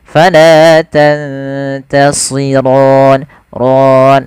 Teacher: pada lafal si tebalkan sedikit karena dia huruf isti'la.